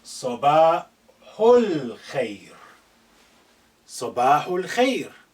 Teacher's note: Note this al-khair, because this alif is not at the beginning, has been suppressed in terms of pronunciation. It's silent, it's not said.